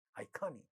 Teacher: ka sound in this stressed syllable is getting aspirated in the word iconic.